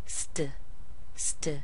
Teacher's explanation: it's not going to have a really strong t with it because of the S before it